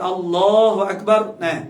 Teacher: lam pada Allah lafaz jalalah tu kena tafkhim. Maknanya kena tebal